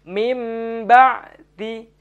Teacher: Nah, di situ ada lafadz mim ba'di nun sukun bertemu dengan huruf ba. Cara membacanya ialah membalikkan huruf nun ke dalam huruf mim. Maka dibaca menjadi mim ba'di. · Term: iqlab